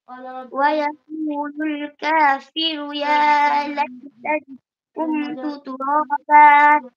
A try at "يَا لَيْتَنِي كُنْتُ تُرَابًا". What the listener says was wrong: আচ্ছা, এখানে যে কুনতু তুরাবা, এখানে তুমি দেখতেছ না যে এখানে একটা নুন সাকিন আছে? প্রেস কুন, এগুলি দেখে পড়ো না কেন? হ্যাঁ, নুন সাকিন তানবিন দেখলে তোমার একটু খেয়াল করার লাগে না যে এটা কি গুণনা হবে না হবে না?